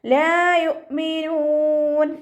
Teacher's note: ലാമിൻ്റെ കൂടെ മദ് വന്നിട്ടുണ്ട്, 2 കൗണ്ട് നീട്ടിക്കൊടുക്കുക. ഹംസ കൽക്കലയുടെ ലെറ്ററില്ലാത്തത് കൊണ്ട് ഹാഫ് സുക്കൂന് കൊടുക്കുക.